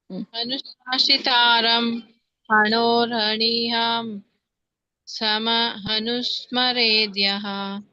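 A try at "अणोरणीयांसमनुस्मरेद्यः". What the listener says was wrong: ಇಲ್ಲ, ಅದು ಸಮ ಅನ್ನೋದು ನೀವು ಮುಂದೆ ತಗೊಳಂಗಿಲ್ಲ. ಸಮ ಅನ್ನೋದು ಹಿಂದಿನ ಪದಕ್ಕೇನೆ ಬರುತ್ತೆ. ಅನುಸ್ಮರೇದ್ ಪದಾನೇ ಬೇರೆ. ಅಲ್ಲಿ ನುಸ್ಮರೇದ್ ಅಂತ ಇದೆಯಲ್ಲ, ಅಲ್ಲಿ ಹಚ್ಬೇಕು. ಅಣೋರಣೀಯಾಂ ಸಮ ಅನುಸ್ಮರೇದ್ಯಃ ಅಂತ ಹೇಳಿ ಒಂದು, ಇಲ್ಲಾಂದ್ರೆ ಅಣೋರಣೀಯಾಂ ಸಮ ಅನುಸ್ಮರೇದ್ಯಃ.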